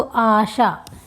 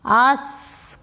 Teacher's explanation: तालव्य श यूज हो रहा है ना मोस्टली संस्कृत के शब्दों में, वहाँ पे अगर दंत स हो रहा तो ये आपका तद्भव रूप हो जा रहा।